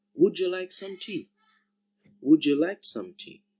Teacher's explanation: when the sound d comes face to face with the sound y together, we find that we get a new sound j